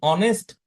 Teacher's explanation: এইচ তো হ এর মত উচ্চারিত হচ্ছে না